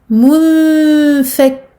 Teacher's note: Je cache le noun en faisant une runna, une nasalisation. Je ne poserai pas le bout de ma langue sur le palais comme je l'aurais fait normalement pour un noun tout à fait clair. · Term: al-ikhfa